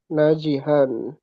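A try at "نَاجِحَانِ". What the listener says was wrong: iya betul. Najihan.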